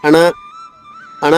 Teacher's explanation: గొంతుతో పాటు ముక్కు నుంచి కూడా గాలి వెళ్తుంది. అందుకని వీటిని అనునాసికలు అంటారు.